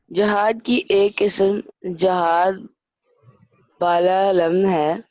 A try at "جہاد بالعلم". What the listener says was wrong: بالا علم نہیں بیٹے، بالعلم ہے یہ.